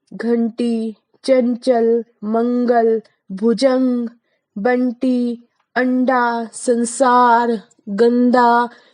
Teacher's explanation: इसका उच्चारण अनुस्वार का नाक से होता है